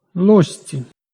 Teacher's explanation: Шиплячий «ж» змінився на свистячий «з». Оскільки «ц» м'який зубний, то зубний «з» ще й уподібнився за м'якістю. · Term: уподібнення за місцем